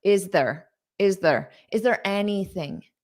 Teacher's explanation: there just might sound a little bit more unstressed